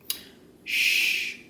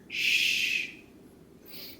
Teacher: The tongue does not touch the top of the mouth. So there is air that comes between the tongue and the top of the mouth. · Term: sh sound